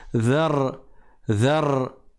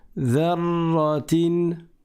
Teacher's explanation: Et quand je fais un ra, je ne roule pas le ra. Je dis pas dhar, dhar.